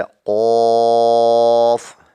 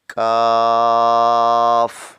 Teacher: قاف جو ہے موٹا پڑھا جائے گا، حروف مستعلیہ میں ہے اور اس کو نرم تالو سے ادا کریں گے، کاف جو ہے اس کو سخت تالو میں سے ادا کریں گے، تو پڑھیں گے پہلے قاف، پھر پڑھیں گے کاف، لام، میم، نون، واو، ہا، حمزہ، جا۔